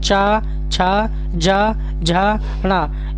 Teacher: तालव्य व्यंजन जो तालू के द्वारा बोले जाते हैं